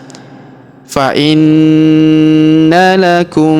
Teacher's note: huruf na kita tahan dan kita tekan serta kita dengungkan dua sampai 3 harakat · Perhatikan, misran fa inna lakum. Huruf na kita tahan dan kita tekan serta kita dengungkan 2-3 harokat karena terdapat tanda tasydid di atasnya.